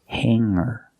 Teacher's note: Hangar does not have a hard G sound